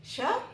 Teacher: तो सबसे पहले देखिए कि नियम जो है वो क्या कहता है कि यदि विसर्ग के बाद श आता है श तालव्य वाला श है। ये श तालु से बोला जाता है। इसलिए इसको तालव्य वाला श कहते हैं।